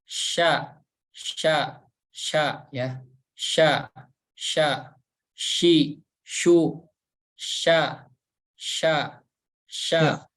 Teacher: tempat keluarnya dari tengah lidah kita menempel ke tengah langit-langit atas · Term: huruf Sin